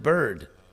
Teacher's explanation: So the actual vowel in the word bird is the R.